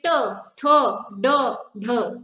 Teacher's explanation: छोटा सा हिस्सा जीभ का, वो टच करेगा मूर्धा पर। ट, वहीं पर टच करेगा, बोल कर देखिए ट ठ ड ढ, ठीक है।